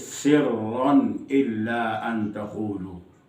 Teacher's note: सिर्रन के रा के ऊपर शद है और साथ ज़बर भी है, रा पुर होगी, बारीक नहीं होगी।